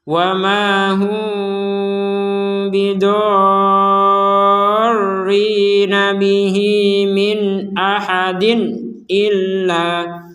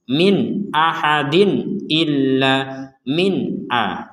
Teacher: Nun sukun atau tanwin bertemu dengan hamzah, ini sama-sama dibaca dengan jelas.